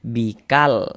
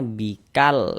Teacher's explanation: cara membaca huruf lamnya dibaca izhar, dibaca jelas. yang artinya jelas itu terbaca huruf lamnya terbaca dia bikal.